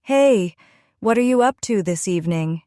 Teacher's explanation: Notice how what are you sounded more like whatcha